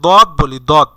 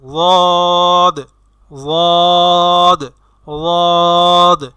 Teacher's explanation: দদ বললে সেটা জিব্বার আগা এবং সামনের দাঁতের সাথে লাগিয়ে উচ্চারণ করা হয়, কিন্তু সঠিকভাবে যখন আপনি উচ্চারণ করবেন তখন সেটি উচ্চারণ কিছুটা জয়ের মতো শোনা যাবে, জ।